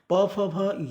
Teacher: प फ भ ये उच्चारण जो है ओष्ठ की सहायता होता है, इसमें दोनों ओष्ठ सक्रिय हो जाते हैं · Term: ओष्ठ व्यंजन